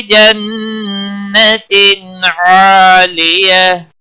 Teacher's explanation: تن اظہار ہوگا، اظہار ہلکی ہوگا یہاں پر.